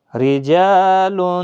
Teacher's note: را زیر کی وجہ سے باریک، الف بھی باریک، لام بھی باریک